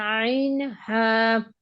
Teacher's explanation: দুই নাম্বার মাকরাজ হলকের মধ্যখান হইতে